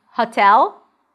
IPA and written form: hatɛl (hotel)